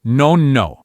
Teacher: The O gets really short and clipped.